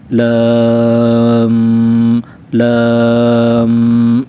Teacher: 3 الف کی مقدار ہم یہاں پر لام اور میم کو ہم کھینچیں گے 3 الف کی مقدار کے برابر، اور لام کو میم کے ساتھ جب ملائیں گے تو میم یہاں پر مشدد ہے، میم پر شد ہے، تو ہم غنہ بھی کریں گے، یعنی ناک میں آواز لے کر جائیں گے